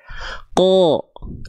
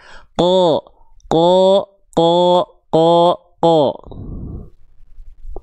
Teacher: Jadi tebal itu karena pangkal lidah naik bukan bibir kita mau nyongko. Tidak. Pangkal lidah saja diangkat. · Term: huruf qof